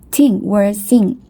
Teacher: The voiceless dental friction is absent, so the word thing might be pronounced like ting